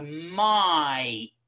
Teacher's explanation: this vowel diphthongized so it starts off with something like a and it ends up as something like ear so might okay your tongue goes for a little wonder it's